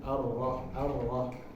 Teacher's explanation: Jadi dilatih lagi huruf ra-nya ya. Jangan banyakin getarannya.